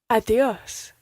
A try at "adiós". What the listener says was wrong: Try to get that soft D in there again. Think of the word the.